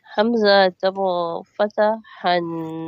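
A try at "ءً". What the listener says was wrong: An. Alif and Hamza pronouncing same. Hamza double fatah an. As alif.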